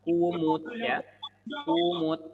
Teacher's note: Ku harus dimonyongkan mulutnya. Tidak boleh tidak, harus monyong.